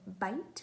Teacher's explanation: Next, in the word bite, we hear the sound b. B is a voiced stop. We generate pressure, or we build up pressure behind the obstruction, and then we let the air release. It's a sudden burst of air.